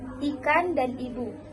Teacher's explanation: Yang ketiga adalah fonem I dilafalkan dengan membuka rongga mulut kecil dan lidah berada di posisi atas